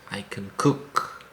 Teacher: when it's positive, don't stress the word can, stress the verb after it.